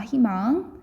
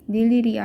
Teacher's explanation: 니은이라는 자음 뒤에서 이중모음 의는 이로 발음하는 것이 원칙이다